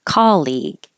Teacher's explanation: I hear people put stress on the second syllable colleague, but it's not. It's on the first syllable. It should sound like ca.